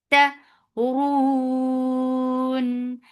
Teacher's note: Ta is very sharp. No flow of breath. No flow of sound. Ta. Because of this work, we are giving temporary sukoon here.